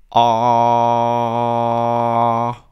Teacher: Du hörst, der Klang ist sehr weit hinten und es fühlt sich auch weder in der Kehle noch in der Zunge gut an. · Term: knödelt